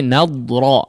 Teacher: huruf dadnya jangan dipantulkan ya, huruf dad ya tetap dia mengalirkan suaranya di dalam lidah ya